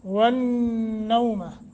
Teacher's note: نون تنوین کے بعد واو مشدد ہے غنہ کریں گے والنوم نون مشدد یرملون کا قاعدہ لگا کے غنہ کر کے پڑھیں گے